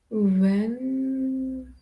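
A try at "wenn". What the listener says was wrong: Pronounce correctly. Vain, not when. Vain. vain?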